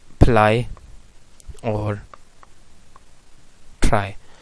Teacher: ठीक है, ये वॉइस साउंड हैं और इनका मैनर ऑफ आर्टिकुलेशन अप्रॉक्सीमेंट्स हम कहते हैं। लेकिन कुछ इन्वायरमेंट्स होते हैं कि जिनमें ये ल और र दोनों साउंड जो हैं वो वॉइसलेस बन जाते हैं।